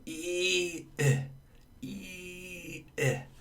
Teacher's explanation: The muscles in the tongue are tense. And compared to E, which is a high front vowel, I is also a high front vowel, but your tongue is more relaxed. It doesn't have as far to stretch.